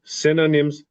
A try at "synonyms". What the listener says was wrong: Except the fourth time you forgot my little S here.